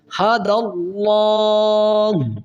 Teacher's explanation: لام سے پہلے زبر ہے تو لفظ اللہ کے لام کو موٹا کیا جائے گا